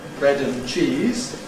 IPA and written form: ˈbred ən ˈʧiːz (bread and cheese)